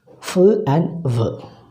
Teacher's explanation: The active articulator is the lower lip and the passive articulators are the upper front teeth. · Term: labiodental